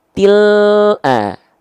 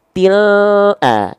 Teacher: Bareng turun lidahnya, keluar vokal a-nya. Til a. Jangan sampai turun dulu lidahnya baru keluar vokal a.